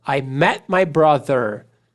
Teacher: Olha como eu corto o T.